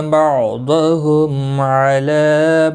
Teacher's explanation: میم ساکن کے بعد عین آیا ہے اظہار شفوی ہوگا